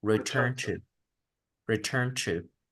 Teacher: junto la N y directamente lo conecto a la siguiente palabra